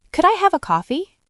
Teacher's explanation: Could I have a coffee? usually goes up at the end. That up sound is friendly. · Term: intonation